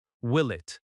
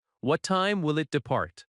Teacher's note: Notice how will it often links, will it.